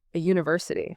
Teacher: that Y glide acts as a consonant. It restricts the airflow just enough that you don't need the N to bridge the gap. >> You can just slide from A to U comfortably.